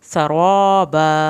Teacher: सीन को सिटी की आवाज़ के साथ पढ़ के रा पुर पढ़ना है